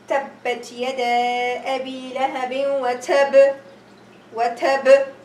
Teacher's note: I'm going to stop at this to tell the listener that there is a shadda here or there was a shadda here. I'm going to really have to make a big qalqalah on it, and that is the highest degree of qalqalah.